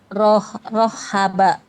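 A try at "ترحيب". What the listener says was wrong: Oke masih seperti ha harusnya rahaba rahaba Oke seperti itu Coba lagi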